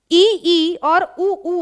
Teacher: संवृत्त स्वर। अब इसमें मुख विवर पूरा नहीं खुलेगा। लेकिन लगभग बंद सा रहता है।